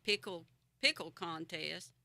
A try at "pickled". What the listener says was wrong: Now, did you read that? It says pickled, not pickle. But there's a D at the end. Pickled.